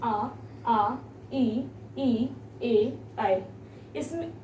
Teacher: इसको जब हम उच्चारित करेंगे तो हमारा मुख गोल नहीं होता है। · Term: आवृत्तामुखी